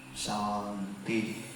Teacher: So when we say Shanti, make it Sha little longer.